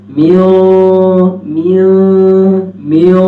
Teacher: میو میو میو، یہ موٹا ہو رہا ہے. اخفا کی آواز ناک میں اوپر لے جانا، اخفا کی آواز آسمان کی طرف اٹھا لینا، تو یہ اخفا موٹا ہو جائے گا